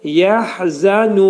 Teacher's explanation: Nu 4 hərəkət miqdarında uzadılacaq. Mədd ariz olacaq, çünki ayə qutarır.